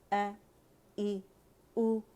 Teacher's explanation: ا ای او، اقص الحلق سے ادا ہوگا